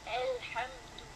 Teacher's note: this ha is a soft ha compared to the ha in the name of Allah, which is right after, which is in the word right after it.